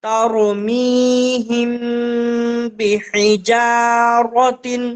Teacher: میم ساکن کے بعد با آئے تو گنہ کے ساتھ اخفا ہوگا۔ ترمیہم با زیر بی حا زیر حی بحی جیم الف زبر جا بحجا را زبر رو تا دو زیر تن ترمیہم بحجارت۔ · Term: اخفاء شفوی